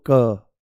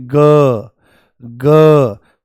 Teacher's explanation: और बोलो देखो हल्का सा बोलो क नॉर्मल बोलो क तो आपको कोई वाइब्रेशन यहां पर महसूस नहीं होगी परंतु जैसे ही आप बोलोगे ग पूरा झंझना जाता है